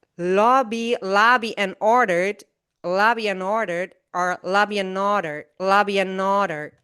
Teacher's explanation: we just cut the A vowel and the D consonant, and we just say n. So lobby and ordered, are lobby and ordered, lobby and ordered, lobby and ordered.